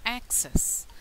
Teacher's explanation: The stress on the first syllable. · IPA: 'æk – ses